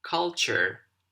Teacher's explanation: with a soft R at the end of the word in American English